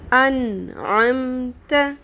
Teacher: یہاں پر میں نے نون کی آواز کو ظاہر کر کے پڑھا ہے، کلیئر کر کے پڑھا ہے، کر کے اس کو چھپایا نہیں ہے، اخفا نہیں کیا ہے۔